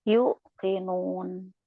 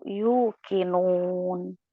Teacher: Nah, dia mat itu bukan hamzah ya, di atas waw itu tidak ada hamzah. Maka jangan ditekan ya. Kalau anti tekan yuk gitu berarti ada hamzah ya.